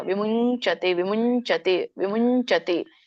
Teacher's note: ವಿಮುಂ ನೋಡಿ ಚ ಚ ಜಜನ್ಯ ಚಜಜನ್ಯ ಯ ಬರುತ್ತೆ ವಿಮುಂಚತೆ ವಿಮುಂಚತೆ ವಿಮುಂಚತೆ ಯ ಬರಬೇಕು ಅಲ್ಲಿ ಯ ಕೇಳಿಸಬೇಕು ನ ಹೇಳಬಾರದು